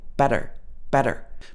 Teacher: your tongue just taps on the top of your mouth not like a d but it just taps slightly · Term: american tapped t sound